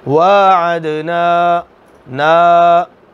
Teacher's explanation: نا نون زبر الف، نا الف مدہ آ گیا ہے، لمبا کریں گے